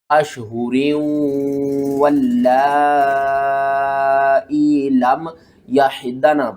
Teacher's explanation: کے بعد حروف یرملون میں سے واو آ رہا ہے، تو یہاں پر آپ نے غنہ بھی کرنا ہے اور را کو واو کے ساتھ ملا کر بھی پڑھنا ہے